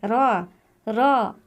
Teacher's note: जबान का किनारा जड़ों से हल्का सा टकराता है जिससे एक हल्की सी लगज पैदा होती है जब जबान का किनारा ऊपर वाले दांतों के जड़ों को हल्का